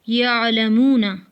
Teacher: حمزہ میں جھٹکا اس وقت ہوتا ہے جب اس پر جزم آتی ہے۔ عین کی آواز قدرے نرم اور بغیر جھٹکے والی ہوتی ہے